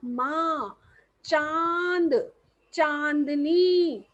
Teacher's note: साथ में अब का मुंह कभी प्रयोग हो रहा है और ध्वनि जो है वह नाक से भी आ रही है मुंह और नाक दोनों का प्रयोग इसे बोलते समय होता है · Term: अनुनासिक